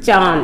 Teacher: अनुनासिक इसे हम मुंह और नाक दोनों से बोलते हैं